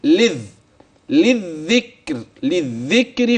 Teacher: من اللام الاولى المكسوره الى الذال مشدده مباشره